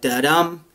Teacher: written in iambic pentameter so an iamb is a stressed or an unstressed syllable followed by stress